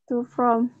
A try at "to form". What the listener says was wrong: Balik itu. O-O-R dulu baru M ya.